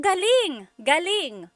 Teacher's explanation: if the emphasis is on the second syllable galing that means good or great or excellent